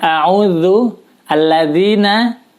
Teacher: lidah kita dikeluarkan ujung lidah dikeluarkan sedikit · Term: huruf Zal